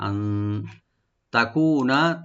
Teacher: আন এখানে নুন সাকিন আমরা ইখফা করব, লাইট গুণা করব এখানে। আন তাকুনা তা ওপেন থাকবে, কু একালিফ টানবেন আর নুনে কোনো টান নাই।